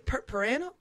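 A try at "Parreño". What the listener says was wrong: Technically, it's Padreño. Padreño, because it's the double R and the N-Y.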